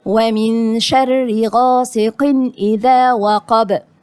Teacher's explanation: طيب أول حاجة النون غنة إخفاء، ودي شرحناها في اللي فاتت. طيب الراء مكسورة يبقى مرققة